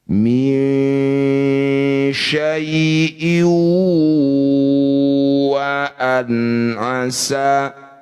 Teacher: Jadi ketika dengung, posisi bibir mencucu. Ya. Huruf wawu ini merupakan asyafa, huruf yang berasal dari bibir. Jadi mau tidak mau harus mencucu. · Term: idgham bi gunnah